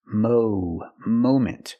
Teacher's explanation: we cannot use a short a sound like hot and stop and Mom we need the long o sound like no and go and phone